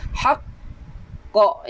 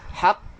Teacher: Bila mana huruf qalqalah di hujungnya ada sabdu, kita kena hold seketika lantunan tu. · Haqq, yang mana kita kena hold seketika lantunan. Haqq, dalam 2 second baru kita lepaskan. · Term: Qalqalah akbar